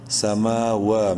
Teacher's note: میم اور واو دونوں کو ایک ایک الف کے برابر لمبا کریں گے